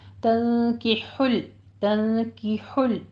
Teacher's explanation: ہا وسط حلق سے باریک ادا کرتے ہوئے آگے لام کو سٹاپ کیجئے